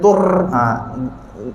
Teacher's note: ra yang fasih ni dia tak bergetar banyak kali